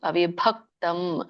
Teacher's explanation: ಭ ಅನ್ನುವಂತದ್ದು ಮಹಾಪ್ರಾಣ ಒತ್ತಿ ಹೇಳಿ · ಭ ಅನ್ನುವಂಥದ್ದು ಮಹಾಪ್ರಾಣ, ಒತ್ತಿ ಹೇಳಿ. ಅವಿಭಕ್ತಂ ಭ ಹೇಳುವಾಗ ನಿಮ್ ಎರಡು ತುಟಿನ ಮುಚ್ಚಿ ಹೇಳಿ. ಭ ಅಂದಾಗ ನಿಮ್ಗೆ ದೊಡ್ಡ ಭ ಕೇಳಿಸತ್ತೆ.